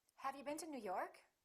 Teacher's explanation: For yes-no questions, we use a rising intonation.